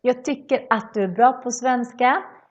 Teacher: The at becomes one a sound instead and a short a.